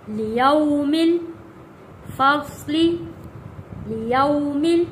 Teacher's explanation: وَإِذَا الرُّسُلُ اُقِّتَتْ، اُقِّ، یہاں پہ دیکھیں قاف کے اوپر بھی تشدید ہے، اُقِّتَتْ، لِأَيِّ، لِأَيِّ یوم اجلت، لیوم الفصل، لیوم، یہاں پہ حروف لین ہے، واو ساکن سے پہلے زبر ہے، جلدی اور نرمی کے ساتھ پڑھنا ہے